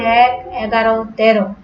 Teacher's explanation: এরপরে আসো 1, 11, 13 ইত্যাদি সংখ্যাবাচক শব্দের এ ধ্বনি এ এর মতো উচ্চারিত হয়। 1, 11, 13 সংখ্যাবাচক শব্দে যখন এ ধ্বনি থাকে তখন সেটা কি হয়? বিবৃত উচ্চারণ হয়।